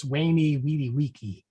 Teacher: In classical Latin, the V is a W sound.